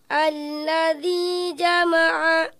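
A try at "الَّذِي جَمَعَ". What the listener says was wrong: Jimnya diperbaiki. Ajja. Alladzi jama'a.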